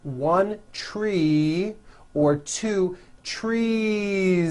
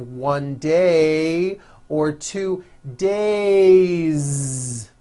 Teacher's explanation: if a word ends with a vowel sound all you do is add a voiced Z it's simple let's look at the word tree the last sound